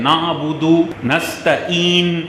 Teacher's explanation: اللہ کے عین کو ختم کر کے یہاں حمزہ پڑھتے ہیں